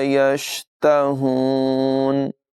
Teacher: ہا جو ہے اس کی آواز حلق کے نچلے حصے سے ادا ہوگی، ہا اور ہا میں نمایاں فرق کریں گے۔